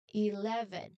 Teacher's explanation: it is very important to use the strong loud V sound in the middle. Remember the V sound is the vibrating sound.